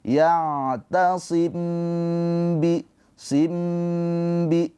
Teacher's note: Ikhfa syafawi. Cara bacanya mim sukunnya ditahan dua harakat. Yaimbi bi tuh ditahan dua harakat.